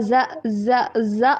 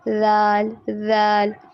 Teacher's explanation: زبان کی نوک کو جب ہم سامنے والے جو اوپر والے دانت ہیں ان سے تھوڑا سا باہر رکھیں گے، پھر جا کے ذال ادا ہوگا